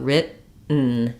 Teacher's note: written is an example of where we use an unreleased T and a syllabic N